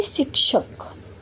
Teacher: श को तालू की सहायता से बोला जाता है।